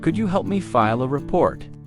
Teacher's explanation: Could you becomes kudya in natural speech.